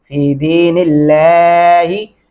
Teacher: दाल ज़ेरिया दी, नून ज़ेर लाम नील, लाम खड़ी ज़बर ला, हाजिर ही, फी दीनिल्लाहि। इस अल्लाह के नाम को बारीक पढ़ेंगे